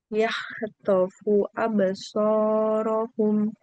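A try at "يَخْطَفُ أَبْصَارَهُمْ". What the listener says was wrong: Oke, dia kayak ada serak-seraknya ya kakak, karena huruf kho. Kho. Berarti kalau sukun, yah, yah. Yakhtofu. Yakhtofu. Oke, hati-hati jangan sampai suaranya seperti H ya.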